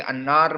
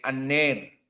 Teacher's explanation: ar-ra al-maksurah fil akhir yang sebelumnya alif maka dibaca dengan al-imalah